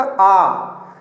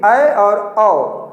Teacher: तो अ औ में अर्धविवृत, पूरा मुंह नहीं खुल रहा है